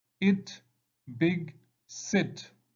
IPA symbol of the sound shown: ɪ